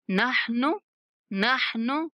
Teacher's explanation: नहनु नून को खींचना नहीं है, नहनु ऐसे नहीं पढ़ेंगे।